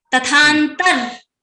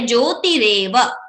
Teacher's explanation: we are converting the visarga into repha.